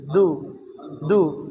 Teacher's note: மேல் பல்லின் பின்பக்கம் தொட்டு தால்